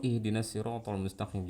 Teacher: huruf h dalam keadaan sukun suaranya mengalir kalau ada Hamzah suaranya berhenti tersentak suaranya alirkan